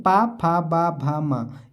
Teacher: ये ओष्ठ से बोले जाते हैं, यानी कि होठों का ही इस्तेमाल किया जाता है, तो इसीलिए इन्हें हम ओष्ठ वर्ण कहते हैं।